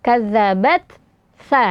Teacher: Kemudian setelahnya bertemu dengan huruf sa ya. Huruf sa ini adalah huruf yang keluar dari ujung lidah yang bertemu dengan ujung gigi seri atas ya.